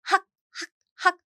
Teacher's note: This 기역 in 받침 position, 학, basically you need to block your throat.